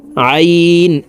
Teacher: আইন হরফকে হালুকের মধ্যখান থেকে চাপ দিয়ে উচ্চারণ করব